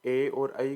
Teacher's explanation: कंठ तालव्य में ए और ऐ को कंठ तालव्य बोलते हैं। ये कंठ और तालु की सहायता से बोले जाते हैं।